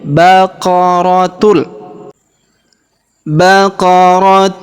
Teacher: kita baca baqaratul bukan lagi baqaratun karena sudah menghilang berubah menjadi baqaratul